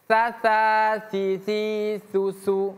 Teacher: Ujung lidah bertemu gigi seri atas. Sa, sa, si, su, su. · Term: huruf sa